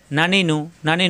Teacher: জিব্বার আগা উপরে তালুতে লাগবে।